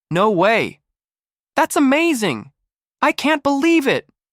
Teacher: The pitch rises, then drops quickly. It's emotional, dramatic, very American. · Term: rise fall tone, rise-fall tone